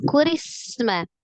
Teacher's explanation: Ro, kasrah, dibaca tipis, kemudian langsung disukunkan ke huruf sin. Sinnya juga sifatnya adalah roghah, alirkan sinnya. Ada as-shafir di huruf sin, ada al-hams ya